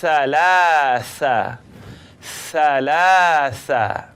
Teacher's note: so it's the tip of my tongue coming up out at the edge of my top teeth now I just like you to simply blow the air between